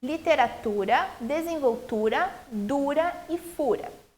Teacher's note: essas palavras todas elas têm a penúltima sílaba mais forte · a sílaba tônica aquela sílaba que eu falo mais fortemente numa palavra é a penúltima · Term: paroxítonas